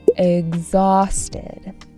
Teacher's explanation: has a stress on the second syllable